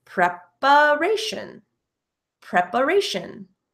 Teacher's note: the first A in preparation, preparation, is the schwa sound